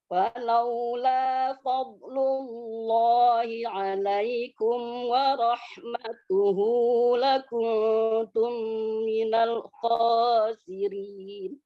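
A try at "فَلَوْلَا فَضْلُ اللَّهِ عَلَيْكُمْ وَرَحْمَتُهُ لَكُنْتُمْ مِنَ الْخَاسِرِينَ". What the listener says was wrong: Masya Allah, bagus bacaannya.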